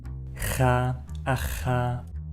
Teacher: sound with a lot of energy behind it ha ha ha the sound is created in the back of your throat · This sound is created in the back of your throat as if you were gargling, and it's the same sound as in the word loch of the Scottish English dialect.